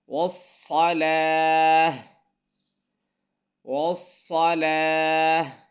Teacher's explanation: صاد یہاں موٹا پڑھنا ہے، لام باریک پڑھنا ہے اور آگے ہا کی آواز آنی چاہیے